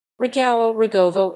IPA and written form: rɔˈɡɔvɔ (Rogowo)